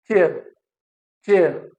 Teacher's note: t is plosive and sh is fricative. So it starts with plosive and ends at fricative.